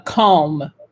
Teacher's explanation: you kind of pronounce the l but you don't really hear it very well